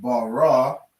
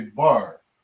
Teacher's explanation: we drop that last syllable on the ra